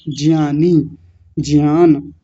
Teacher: अब आगे देखिए, तो आज के बाद इसको ज्ञानी नहीं बोलना, ज्ञानी बोलना है, ज्ञान बोलना है, क्योंकि इसका उच्चारण होता है य, और ज के साथ मिल करके बनेगा ज्ञ। तो जहां भी इसका यूज होगा बनेगा ज्ञ, ज्ञानी, ज्ञान।